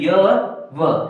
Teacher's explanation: य और व बोलेंगे तो हमें बिल्कुल भी संघर्ष की जरूरत नहीं पड़ेगी। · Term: संघर्षहीन व्यंजन